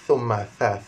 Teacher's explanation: Kemudian thumma, lidah mesti kena keluar